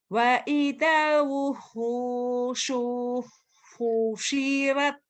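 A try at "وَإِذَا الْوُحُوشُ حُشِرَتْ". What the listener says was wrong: Pendek sunya. Ayo, pendek. Wa idzal wuhusyu husyirat. Wa idzal wuhusyu husyirat. Wa idzal wuhusyu husyirat. Tapi jangan wuhunya tetap antobi ya. Wa idzal wuhusyu husyirat. Wa idzal wuhusyu husyirat. Husyirat ada hamasnya. Ini banyak hamas.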